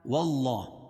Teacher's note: اللہ کے لام سے پہلے زبر یا پیش ہو تو اللہ کا لام پر ہوگا، موٹا پڑھا جائے گا، اور کھڑا زبر قائم مقام الف مدہ کے اس کو ایک الف کے برابر کھینچ کے پڑھیں گے.